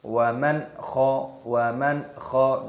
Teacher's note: Waman kho nun sukun bertemu dengan kho, ini hukumnya dibaca idhar halqi. Idhar itu artinya jelas, halqi artinya tenggorokan, jadi dibaca jelas, tidak boleh didengungkan. Waman kho tidak boleh, harus jelas.